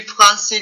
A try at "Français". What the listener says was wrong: On essaie de sortir le R d'espagnol. Ok, qui roule.